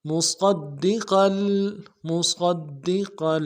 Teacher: صاد کو موٹا کرنا ہے، دال کے ساتھ ملائیں گے، دال کے اوپر تشدید زور دیں گے ، اگلے دال کو نون سے ادا کریں گے، قاف کے